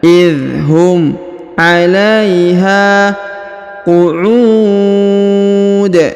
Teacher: Kemudian huruf ha dipanjangkan 2 harokat karena di depannya terdapat alif ya.